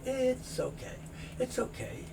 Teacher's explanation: the S moves over to the O, so you don't hear it's okay, you hear it's okay.